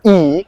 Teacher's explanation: So you guys can pull up the IPAchart.com if you want. So that vowel is E, and it can be categorized as a high front unrounded tense vowel